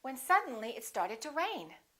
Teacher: rain would be your focus word